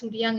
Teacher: they would insert a velar nasal ng at the end in words, in most of the words that end with back vowel